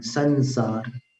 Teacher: संसार में जो उच्चारण है अनुस्वार का वो न के समान है